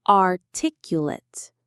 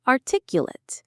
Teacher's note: The stress, the strongest part of the word is on that second syllable, tick.